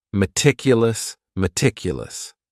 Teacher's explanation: this word has four syllables and the stress is on that second syllable meticulous meticulous that first syllable also has that schah that a · The next word is meticulous, and this word has 4 syllables, and the stress is on that second syllable.